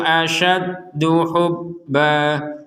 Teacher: Kalau berhenti maka menjadi hubba, jadi panjang 2 harokat.